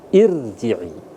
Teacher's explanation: ketika huruf sebelumnya berharakat kasrah maka dia dibaca tipis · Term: tarkik